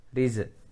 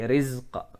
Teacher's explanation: hati-hati pada za jangan sampai terpantul. Riz tidak boleh, tapi rizqa dialirkan.